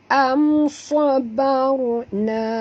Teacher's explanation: Sabarna. Ra pun tebal kerana ra ini mati, huruf sebelumnya baris atas. Jadi ini pun tebal, ini pun tebal, ya.